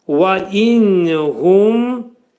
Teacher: Və inhum nunla mim hərflərini çox dəqiq şəkildə bildirmək lazımdır ki, qıraqdan dinlənən oxucular üçün nunla mim hərfləri eşidilməlidir. Və inhum mim hərfində ağız yumulu, hu dolu oxunacaq. Hə hərfinin məxrəci boğazın aşağısındadır.